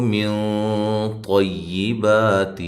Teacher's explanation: موٹا اخفا ہے کیونکہ طا حرف موٹا ہے اس وجہ سے اخفا موٹا ہوگا